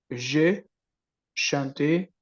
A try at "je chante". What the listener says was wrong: non, no. Je chante, je chante, je chante. Esto es muy importante porque cuando tú dices je chanté, estás hablando del pasado, pero cuando dices je chante, con la T, termina en la T, no en la E, es el presente.